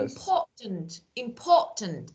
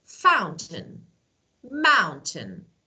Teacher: instead of pronouncing T completely or fully, the sound is cut off by the throat